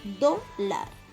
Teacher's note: La palabra o la sílaba lar es nuestra última sílaba. Y nuestra penúltima sílaba es do. Y está acentuada en do.